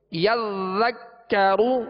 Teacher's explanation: یذکر یذکر، ذال مشدد ہے اس کو بھی دوہرا پڑھیں گے، اور کاف مشدد ہے اس کو بھی دو مرتبہ پڑھیں گے، لہذا ذال کو نرمی کے ساتھ پڑھیں گے، ذال کو یذک کا نہیں پڑھیں گے بلکہ یذکر، کاف کو بھی باریک پڑھیں گے، را پر پیش ہے تو را کو پر پڑھیں گے